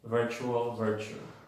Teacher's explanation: una T más una U casi siempre es una Che. Y más, otra vez, en sílaba débil.